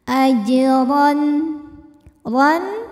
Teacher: di tengah bacaan maka dibacanya dipantulkan dengan pantulan yang kecil ajron huruf ro dibunyikan secara tafkhim karena rnya ini berbaris di atas yaitu fathah tanwin maka cara bacanya adalah dibunyikan dengan tebal pangkal lidah dinaikkan